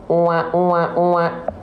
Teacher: suara yang masuk ke rongga hidung harusnya dia enggak berubah suaranya contoh bacaan Ain yang dia masuk ke rongga hidung Perhatikan baik-baik ya A berubah engak suara ya ada bunyi ua